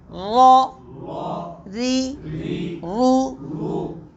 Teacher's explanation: را پر ہوگا، ری باریک ہوگی اور رو پھر پر ہوگا